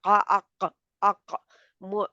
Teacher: मोटा है, इस्ताला है, ज़ुबान की जड़ ऊपर उठी हुई है